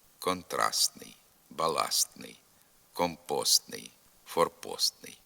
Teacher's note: контрастний форпостний літера Т пишеться алебо зовсім не вимовляється контрастний або частіше вимовляється ослаблено лише з натяком на звук т